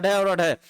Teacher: जीभ ऐसे जाएगी, टच करके तुरंत हट जाएगी, जैसे हम बॉल को फेंकते हैं टकरा कर, कहीं से टकरा कर तुरंत वापस आती है, वैसे जीभ इसका ज्यों उच्चारण करेंगे अढ़ और अढ़, आपका जीभ टच करके तुरंत जोर से वहां से हटती है, इसलिए इसको उत्क्षिप्त व्यंजन वर्ण कहा जाता है